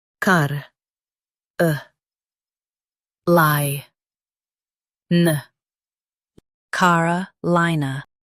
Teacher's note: Stress li in Carolina.